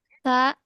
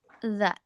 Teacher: za itu harus dibacanya lebih tebal sedikit daripada sa, supaya si anginnya itu tidak mengalir deras. Za. Nah, yang ini baru kalau tadi kan cuma nempel sedikit nih.